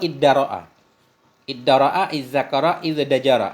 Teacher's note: dibalikkan akan ta menjadi dal liqurbiha karena dekatnya dal dari ta makhrajan nisbah makhraj huruf